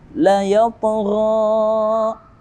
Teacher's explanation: ta mati atau ta sukun yang mana berada pada tengah-tengah ayat. Dia berhukum tajwid qalqalah sughra atau pantulannya ringan.